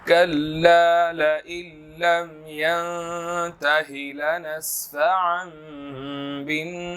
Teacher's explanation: یہاں پر كلا لئن لم ین نون ساکن ہے، اخفا ہوگا. اب یہاں پر اس کے آگے جو ہے وہ رموز اوقاف میں سے لام الف ہے، یہاں پر ہم اس کو پھر ملا کر پڑھیں گے.